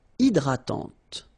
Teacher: don't insist on the final E, and this is nasal.